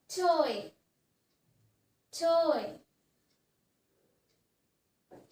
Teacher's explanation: from a middle sound from a middle position to a high sound to a high position